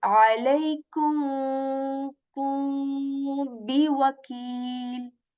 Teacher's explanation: When I'm saying alaikum, I'm not actually, articulating the meme here. I'm saying ka letter, ku, and after that I'm just saying kum, like the kum. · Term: ikhfa